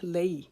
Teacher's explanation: لئی کو پڑھتے ہوئے ہم ایک الف کے جتنا لمبا کریں گے